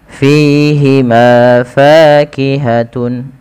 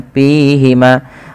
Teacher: fa memiliki salah satu sifat-sifat hames yang di mana ketika melafalkannya harus mengalirkan nafasnya. Dan teman-teman tidak boleh menggunakan huruf P ya. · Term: sifat hamas